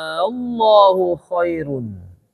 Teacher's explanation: Ya kan? Nah, untuk membedakan bahwa dia nanya, maka A-nya dipanjangin. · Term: mad farqi